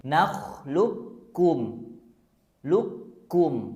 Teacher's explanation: Q sukunnya enggak dibaca langsung tasjidkan huruf kafnya